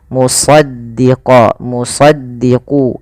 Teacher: lidah kita lebih melekat dengan langit-langit atas, maka dia agak ditebalkan dalam melafalkan huruf isti'ala ini.